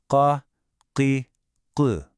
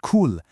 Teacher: this isn't a front-of-the-mouth sound at all. It all happens deep in the back. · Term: qaf